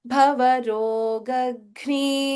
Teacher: So just remember in this word Bhavarogagni, Bha is Mahaprana, Ga is Alpa Prana.